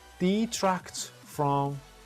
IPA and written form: dɪˈtrækt frəm (Detract from)